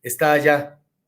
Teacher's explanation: Una tónica con una átona se convierte en una A larga.